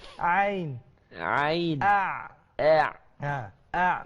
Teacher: ain ni jaga-jaga jangan naik ke hidung. Jangan naik ke hidung. Dihalqum ain.